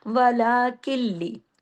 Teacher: काफ जो है उसके बाद नून साकिन है, लेकिन आगे तशदीद है, तो काफ जाके लाम में जुड़ रहा है।